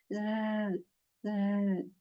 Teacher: in the letter there is the scratch at the start so in z letter Z we have this you know buzzing sound this vibration